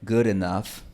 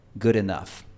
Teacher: Es solo un golpe rápido de la lengua al borde alveolar